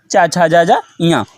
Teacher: ये व्यंजन तालु से बोले जाते हैं, इसलिए इन्हें तालव्य वर्ण कहते हैं